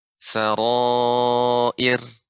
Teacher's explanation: Ir, ya, ra-nya tipis.